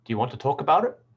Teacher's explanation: the focus word is on talk because it's the last content word